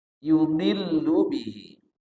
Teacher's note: yudillu bihi panjangnya dua harakat ini namanya Mad Silah qasirah Mad silah qasirah ha damir bertemu selain huruf hamzah panjangnya dua